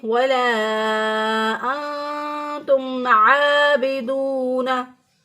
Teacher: मीम साकिन पर हमने गुन्ना नहीं करना, हमने यहाँ पर इजहार करना है, क्योंकि मीम साकिन के बाद ना मीम है और ना ही बा है, तो इसलिए यहाँ पर इजहार करेंगे।